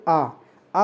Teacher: जिस स्वर के उच्चारण में मुख सबसे अधिक खुलता है अर्थात पूरा खुलता है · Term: विवृत